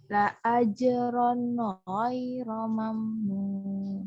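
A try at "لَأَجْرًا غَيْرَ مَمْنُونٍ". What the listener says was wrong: Nah, tadi tuh kalau sukun jangan dipantulin. Jadi sukun tuh gimana tadi? Ghairo. masih mantul tanwinnya. La ajron.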